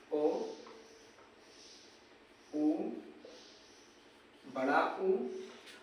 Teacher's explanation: ऐसे स्वर जिन्हें बोलते समय जीभ का पिछला हिस्सा थोड़ा उठता है, उन्हें पश्च स्वर कहते हैं